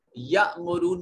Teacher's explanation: یأمرون میں دیکھیے حمزہ ساکن ہے، جھٹکے سے ادا کریں گے